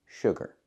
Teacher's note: no sugar the word is not pronounced sugar it's pronounced sugar don't use a long ooh like food and moon use the short uh like good and book uh sh sugar example soda has a lot of sugar not